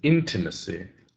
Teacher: So we put the stress on the first syllable.